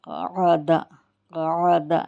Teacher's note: قاف کو جو ہے زبان کی جڑ پرجیب کے اندر سے نکالیں گے